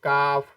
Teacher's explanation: एक होता है काफ जिसकी अदायगी थोड़ा हलक से होती है लेकिन थोड़ा आगे हलक के अगले हिस्से से